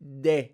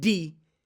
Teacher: Spanish is more of a de, like tip of your teeth, de, not D, de, be, not B, be. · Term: soft sound